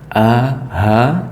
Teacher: pangkal tenggorokan hampir ke Dada ya masih masuk tenggorokan ya itu tempat hurufnya a sama ha bisa dicoba atau dipegang ya A H itu ada di tenggorokan